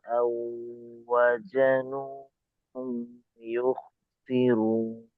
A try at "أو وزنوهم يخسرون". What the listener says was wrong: আচ্ছা, এই জায়ের উচ্চারণটা কিন্তু ওয়াজানুহুম এমনটা, অর্থাৎ মাখরাজে ছিল না, তো এটাকে মাখরাজে রাখতে হবে। জা জাজিজু আও ওয়াজানুহুম ইখসিরুন।